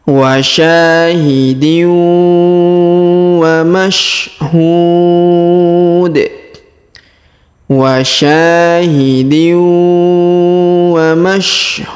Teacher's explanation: Huruf hu kita panjangkan, boleh 2 harokat, boleh 4 harokat, boleh 6 harokat ya. Karena di depannya juga terdapat waw sukun sebelum huruf pemberhentian.